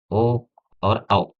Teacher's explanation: ओ और औ का उच्चारण स्थान कंठ और ओष्ठ होता है